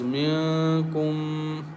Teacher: Noon sakin is followed by a kaf, so we recite with light nasal sound